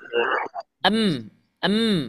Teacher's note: kebetulan mim juga makhrajnya di kedua bibir